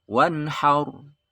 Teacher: Kemudian ro sukun jatuh setelah fathah dibaca tafkhim, tebal ya. Haur. Enggak boleh dibaca wanhar, kurang ya.